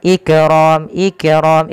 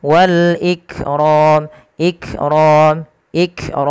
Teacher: apa tertahannya suara yang kedua dia sifatnya Hames mengalirnya nafas maka langkah pertama tahan dulu suaranya Ik baru alirkan nafasnya tapi tidak lama-lama tidak Ik tapi langsung saja Wal Ikrom ikqr ikqr seperti itu · sifat Kaf itu ada sifat namanya ee syiddah syiddah itu apa tertahannya suara yang kedua dia sifatnya Hames mengalirnya nafas maka langkah pertama tahan